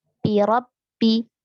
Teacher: bertemu dengan huruf ba bertasydid bi. Hati-hati jangan sampai menjadi huruf p